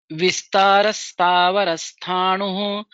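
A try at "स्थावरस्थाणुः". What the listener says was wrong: Only one place you missed the Mahaprana. Sthavarasthanu. Sthav you missed. All other places Mahaprana and all other letters was perfect.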